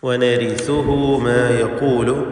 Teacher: വനരീസുഹു ഹാഇന് മദ്ദുസിലത്ത് സുഗ്റ നൽകണം. 2 ഹറക്കത്തിൻ്റെ അളവിലുള്ള ദീർഘം